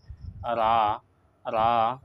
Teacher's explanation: জিহ্বার কিনারা উল্টা সাইড আর সামনের দাঁতের গুড়ির সাথে লাগাইলে এখান থেকে রা আদায় করা হয়